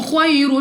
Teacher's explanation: یا ساکن سے پہلے زبر یا لین بغیر کھینچے بغیر جھٹکا دیا پڑھیں گے. را کے اوپر 2 پیش ایک تو را کو پر پڑھیں گے یعنی موٹا اور اس کے بعد 2 پیش کی تنوین کے بعد لام حروف یرملون میں سے ہے بغیر غنہ کے پڑھنا ہے اور وقف میں ہا کو گول ہا سے بدل کر پڑھا جائے گا. · را کے اوپر 2 پیش اور 2 پیش کی تنوین کے بعد لام حروف یرملون میں سے ہے ادغام کا قاعدہ ہے · خا کو مستعلی کی وجہ سے موٹا پڑھنا ہے